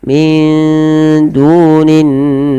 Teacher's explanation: ada mad thabi'i dommah bertemu wau panjangnya dua harakat